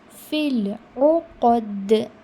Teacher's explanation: If you are reading ukhad, that means you are pronouncing alif or hamza, not ain.